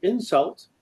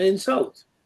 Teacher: so insult is a verb to insult somebody and the stress is on the second syllable by contrast an insult is a noun and the stress there is on the first